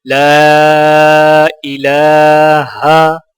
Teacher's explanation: لا الہ، لام کو الف کے ساتھ ملاتے ہوئے، چونکہ الف کے اوپر چھوٹا مد ہے تو لہٰذا 3 سے 4 سیکنڈ کھینچ کر پڑھا جائے گا، اور یہاں پر لام کے اوپر کھڑی زبر ہے تو لہٰذا کھڑی زبر کو ایک الف کے برابر کھینچ کر پڑھیں گے۔